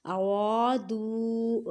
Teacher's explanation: ان ارادوا نون ساکن کے بعد حمزہ حروف ہلکی میں سے اظہار کا قاعدہ کریں. ارادوا را کو موٹا پڑھیں اور را کو ایک الف کی مقدار میں کھینچ کر پڑھیں